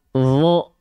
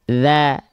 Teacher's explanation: Dho itu dibaca tebal. Dho. Kalau zal tipis.